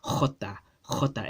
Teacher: just like hey in Spanish Jota was pronounced as Jota Jota it has that guttural that strong guttural pharyngeal sound